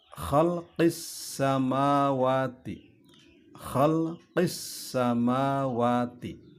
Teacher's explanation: Di situ ada bunyi idgham syamsiyah